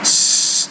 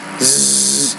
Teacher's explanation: the S is a voiceless consonant, the Z is a voiced consonant